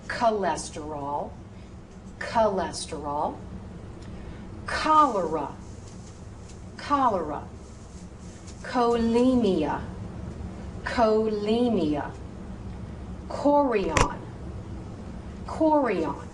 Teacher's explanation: Now, CH in a medical term is a K sound